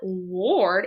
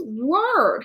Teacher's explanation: not lord it's word and so this part gets tricky because the o r is actually going to sound like an r sound instead of an or sound